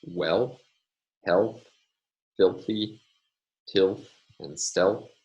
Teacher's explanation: the dark L with dental place of articulation occurs only before the interdental fricative